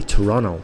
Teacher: they say Torono, and that's just their accent, but they swallow the T, they don't bother saying it. So if you're not familiar about that, it might be a bit difficult to understand it.